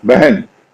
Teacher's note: लेकिन ह का कुछ ऐसा असर है कि उससे पहले की ध्वनि अगर अ है, ह से पहले ध्वनि अ है, तो वो अ के टोटल ए नहीं होगी, एक तरफ झुकाव होगा।